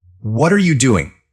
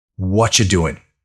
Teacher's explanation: When native speakers talk, they don't say what are you doing? They say what you doing. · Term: connected speech